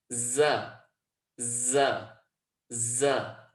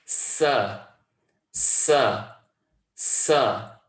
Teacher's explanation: the tip of the tongue tucks behind those bottom teeth, and they all come from the same point of origin. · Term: as-safir